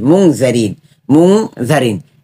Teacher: মিম নুন পেশ মুন মুন কিন্তু আমরা উচ্চারণ করতেছি অনেকটা অনুস্বরের মত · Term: গুন্না